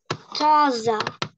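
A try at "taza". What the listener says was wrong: Тільки не з, а це с. Таса. These, those, як в англійській мові. З. Не таза, а таса. На таса. З. Так, як в англійській мові. Це с.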